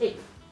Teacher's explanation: So instead, what we say is eighth, right? We again we merge the th and the t together